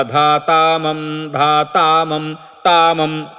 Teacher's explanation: ధాతామం ధాతామం తామం త కి దీర్ఘం చెబుతారు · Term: ద్రవిడ పాఠము